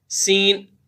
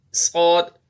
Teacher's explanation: اب سین اور صاد میں اب ان کی آواز ایک ہے، سین صاد، فرق یہ ہے کہ سین باریک پڑھا جاتا ہے اور صاد کو موٹا کر کے پڑھتے ہیں۔